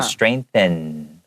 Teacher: make sure that the end of the word you're not closing your mouth because then that will sound like an M